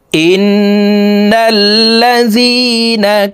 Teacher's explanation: তাসদিদওয়ালা নুনের সাথে নাকের বাসি থেকে 3 সেকেন্ড পরিমাণ গুন্নাহ করে ধরে রাখবো। এই গুন্নাহকে ওয়াজিব গুন্নাহ বলা হয়।